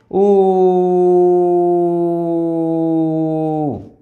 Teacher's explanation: উ উচ্চারণ করার সময় কোথাও আমাদের ধাক্কা লাগে না, ধ্বনিবাহী বাতাস সরাসরি বাইরে আসে